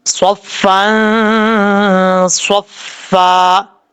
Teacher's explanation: رہا ہے تنوین کے بعد تو یہاں پہ اخفا کریں گے، نون تنوین کا اخفا، ایک الف کی مقدار غنہ کر کے پڑھا جائے گا